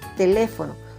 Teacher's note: Su mayor fuerza de voz está en la sílaba le. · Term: palabras esdrújulas